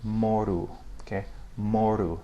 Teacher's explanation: When it's in final position, it sounds more like a U, okay, in some dialects.